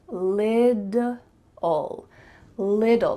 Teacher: Do you see there's 2 T's in the middle of this word? But really in American English, those T's are going to become D sounds. So it's going to sound like little, little, like a lid that you put on a container, little.